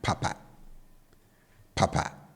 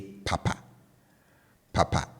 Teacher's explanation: you can hear I bring the tone on both syllables down